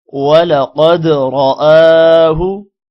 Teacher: قوف موٹا ہوگا، دال پر قلقلہ ہوگا